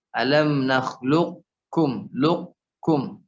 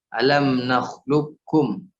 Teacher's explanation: Ada dua cara bacanya ya. Dia menyertakan huruf qaf terlebih dahulu baru ke kaf